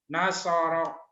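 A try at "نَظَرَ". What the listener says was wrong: Bukan Nasoro. Zo. Nazoro. Zo. Nazo. Z-H-O. Zo.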